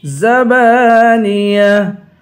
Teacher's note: با کو 1 الف کی مقدار کھینچ کر پڑھیں گے، آخر میں گولتا ہے، گولتا پہ جب وقف کرتے ہیں گولتا ہاں بن جاتی ہے۔